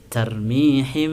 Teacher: keempat tarmihim nah ini mati bertemu ba maka disebut Ikhfa Syafawi Ikhfa Syafawi dibacanya harus dengung